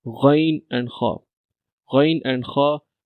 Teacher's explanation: After that this is the third part of the throat and the last two letters from throat you can see here and these letters voice come from the part of the throat top part of the throat. These letters were pronounced from the top part of the throat.